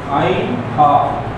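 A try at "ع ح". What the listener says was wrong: কণ্ঠনালীর মাঝখান থেকে যদি হয় হাটা মাঝখান থেকে আসে না তো।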